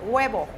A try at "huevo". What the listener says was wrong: No guava, ¿eh? Huevo. Guava, I was thinking a guava, the fruit, es guayaba en español.